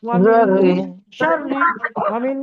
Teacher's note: গুন্না হবে নুন সাকিনের পরে শিন এসছে